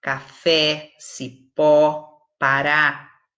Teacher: Quando a sílaba mais forte, a sílaba tônica, é a última, nós chamamos a palavra de oxítona.